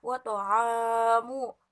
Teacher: wa ta'amu itu panjang 2 harakat, itu mat tobi'i